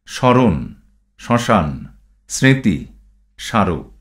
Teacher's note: প্রথম সূত্র, বাংলা শব্দের পদের আরম্ভে ব্যঞ্জনবর্ণে মফলা যুক্ত হলে সাধারণত তার কোনো উচ্চারণ হয় না, তবে প্রমিত উচ্চারণে মফলাযুক্ত বর্ণটি সামান্য আনুনাসিক হয়ে ওঠে।